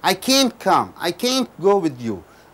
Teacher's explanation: you should stress the word can't